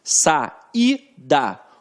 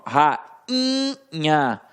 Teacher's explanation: Agora, quando eu falo rainha, ó, rainha, o I não tem som de I, ele tem um som nasalizado, ele perde aquele aspecto de vogal pura, ele fica nasalizado